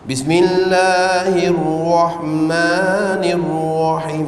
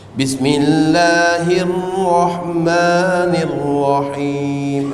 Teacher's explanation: baca tebal tapi tak ada wau